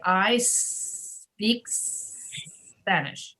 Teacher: if you make the s very long that will eliminate that little vowel sound e